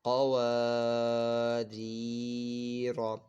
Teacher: اب یہاں پہ بھی قواعد دیکھیں، پہلے یہ قوف جو ہے اس کو ہم نے پر پڑھنا ہے کیونکہ یہ حروف مستعلی میں سے. اور یہاں پہ الف سے پہلے زبر ہے، الف مدہ ہو رہا ہے، اس کو ایک الف دو حرکات کے برابر کھینچ کر پڑھنا ہے.